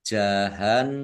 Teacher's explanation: Nun tasdid dibaca ghunah Dibaca mendengung ditahan dan dua harakat biar tampak dengungannya kemudian mimnya dibaca sukun karena W karena waqaf